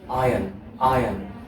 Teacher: we do not pronounce the r sound there